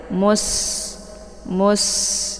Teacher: Ini alifnya tidak dibaca ya, langsung sinnya disukunkan. Sinnya dibaca tipis, kemudian karena dia sifatnya adalah shafir, maka anginnya dibaca jelas ya.